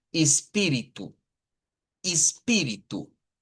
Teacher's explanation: espíritu con el acento en la pi